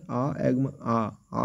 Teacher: বিবৃত, যে স্বরধ্বনি উচ্চারণের সময় মুখবিহবের আয়তন সব থেকে বেশি হয় তাকে বিবৃত স্বরধ্বনি বলে। বাংলায় আ উচ্চারণ করলে কতটা বড় মুখ হা হয়ে যাচ্ছে